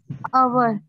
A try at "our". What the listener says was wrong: आवर नहीं कहना, आर flower, आर आर flower. सो जदों असीं ओ यू आर नू प्रोनाउंस करना है, इहदा साउंड सिर्फ आर आएगा, आवर नहीं आएगा, फुल नहीं प्रोनाउंस करना, आर, इहदा साउंड आर है, ठीक है, आर.